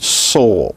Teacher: the s in the word soul so what we're describing is alveolar again it's the alveolar ridge fricative and voiceless